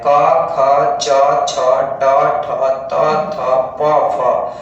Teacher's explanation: इनका जब हम लोग उच्चारण करते हैं तो केवल श्वास का प्रयोग होता है, गला में जो है वो कंपन नहीं होता है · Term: अघोष वर्ण